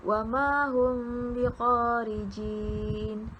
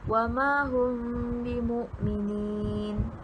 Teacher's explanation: menyembunyikan bunyi mim sakinah beserta dengan dengung dengan kadar 2 harkat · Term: ikhfa syafawi